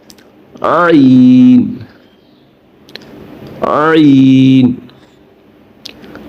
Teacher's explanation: حلق کے بیچ میں سے یہ آواز نکلے گی، یعنی کہ یہ حلق سے آواز نکلے گی۔ جہاں پہ ہمارا منہ کا اندرونی حصہ ختم ہو رہا ہے وہاں سے ہمارا گلے کا حلق کا حصہ شروع ہو رہا ہے، وہاں سے یہ آواز عین، تھوڑا سا دباؤ دے کے، زور دے کے، عین۔